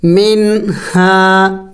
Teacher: نون ساکن پر اخفا ہوتی ہے، لیکن یہاں پہ نہیں کرنا، اس لیے کہ اس کے بعد حروف حلقی میں سے ہا ہے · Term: اخفا نہیں کرنا